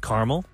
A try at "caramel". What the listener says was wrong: There's two A's in there.